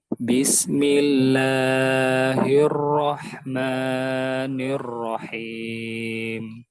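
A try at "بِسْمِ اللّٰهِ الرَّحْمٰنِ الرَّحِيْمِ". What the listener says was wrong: La sama maknya satu ayun saja, jangan kepanjangan. Bismillahir. Sama persis seperti a'udzu. A'udzu lahir manir.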